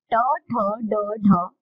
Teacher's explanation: टा वर्ग का उच्चारण करते समय आपकी जीभ मूर्धा से उच्चारण करेगी, मूर्धा से स्पर्श करेगी